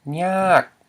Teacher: So when we look at this word, we know to pronounce it as nyak with a falling tone.